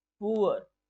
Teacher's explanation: पुअर को जब हम प्रोनाउंस कर रहे हैं तो इसके प्रोनाउंसिएशन से हमें ऊ और अ, ऊ प्लस अ का साउंड एक साथ देखने को मिल रहा है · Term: वोवल ग्लाइड्स